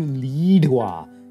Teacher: turns to lidua using a retroflex voiced aspirate